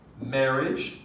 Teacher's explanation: marriage stress on the first syllable